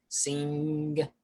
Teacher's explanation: my tongue goes up and i start to really feel that in my nose and in my sinuses